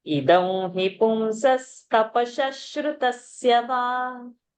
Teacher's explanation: Sa and sha not to make. Shruta is sha and ra. So visarga will become sha over there.